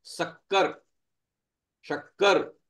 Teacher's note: जिस सा को बोलते समय हमारी टंग जो है वो ऊपर तालू को छुए वो कहलाता है तालव्य सकार